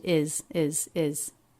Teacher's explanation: is is pronounced with a light weak z sound at the end